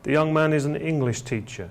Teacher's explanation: The young man is an English teacher, and you can hear that the stress is on the word English here, not teacher, but it could be on teacher, but here the stress is placed on English.